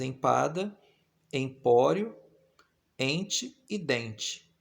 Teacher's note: o fonema vogal nasal em, representado pelos dígrafos EM e EN, aparece nas palavras empada, empório, ente e dente